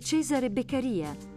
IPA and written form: ˈtʃeːzare bekkaˈriːa (Cesare Beccaria)